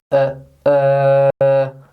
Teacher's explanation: It's actually the long version of the schwa sound. So if we say the schwa sound again uh uh if we make a long noise uh that is the disgusting sound and we find that in words like perfect nurse world.